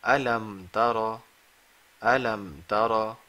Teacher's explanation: We are not doing any ghunna over here. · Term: Izhar Shafawi